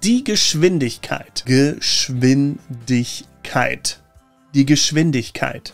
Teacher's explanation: The SCH in Geschwindigkeit is always pronounced sh, and that W is like a V. So it's like Geschwindigkeit and not Geschwindkeit.